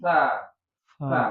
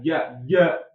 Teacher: kita pegang nih jakun kita mengucapkan sa enggak bergerak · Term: Hams